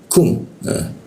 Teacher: di siku tenggorokan, lidahnya diturunkan, rongga udara terbuka dan ada hembusan udara ketika dibacanya kum